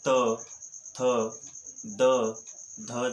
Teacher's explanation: यानी कि हम जब इन दंते ध्वनियों का उच्चारण करते हैं तो जो जिह्वा होती है वह ऊपरी दांतों को स्पर्श करती है और तब जो है वह त, थ, द, ध जैसी ध्वनियों का निर्माण होता है।